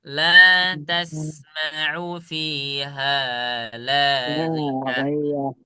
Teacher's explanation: ketika ghain yang salah satu huruf yang dibaca tebal seharusnya, ketika dia berharokat kasroh, maka dia dibaca tipis